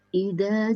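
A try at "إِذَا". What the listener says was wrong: Zanya ujung lidah di balik gigi atas. Za. Ida. Jangan terlalu banyak nempelnya. Tempelkan dikit aja. Za.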